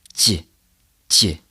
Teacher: the tip of your tongue needs to rest behind your bottom row of teeth, and then the middle of your tongue moves up and touches the roof of your mouth to make that consonant connection.